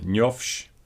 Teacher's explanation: the optative form njofsh, that you know, with h becoming f